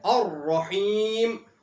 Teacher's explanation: الرحیم کے اندر را کو موٹا پڑھا جائے گا کیونکہ را کے اوپر یہاں بھی زبر آئی ہوئی ہے۔